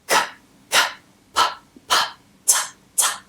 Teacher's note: There's no vibration. That's because they're voiceless.